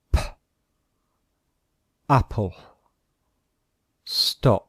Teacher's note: the sound of the voiceless consonant, example P, comes only from the mouth